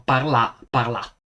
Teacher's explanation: in Lombardo orientale dicono Parla parla e questo è Infatti l'assenza della lunghezza vocalica